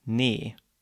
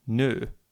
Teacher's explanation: a word for no so to get from me to no it's just a matter of changing the position of your lips in this case from spread to rounded